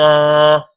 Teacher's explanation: ان نون پر غنہ بھی ہے اور شد بھی ہے، نون 2 بار شد کی وجہ سے ادا ہوگا